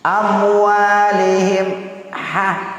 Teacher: mim mati bertemu dengan ha itu tidak boleh berdengung, namanya izhar syafawi